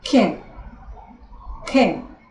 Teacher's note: Você faz a sua boca como se você fosse fazer um A, e aí você fala um E.